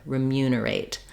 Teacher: mu saying the m and the Y Glide um then because we have the stress on that second syllable mu that means that the first syllable letters re e are not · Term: reduced I sound